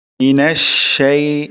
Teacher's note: মিনাশ, এখানে শিন থেকে বাতাস বের করব।